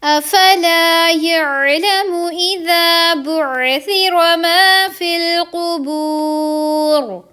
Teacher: قوف کے اوپر پیش ہے، اس وجہ سے اس کو ہم پر کر کے پڑھیں گے، ٹھیک ہے، موٹا کر کے پڑھیں گے